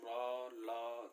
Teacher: तो ये र जैसे उच्चारण करेंगे र ल, तो ये मसूड़े से उच्चारित, जब मसूड़े पे आपकी जीवा टकराएगी तो ये उच्चारित होते हैं दंत मूल से